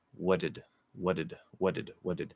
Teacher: what did what did so i'm saying i'm flapping the d i'm turning the t in what or it into a flap d